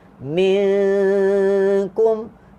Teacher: Tengok nun mati jumpa kaf huruf istifal ataupun huruf tipis. Jadi ikhfa-nya sini dibaca dengan tipis.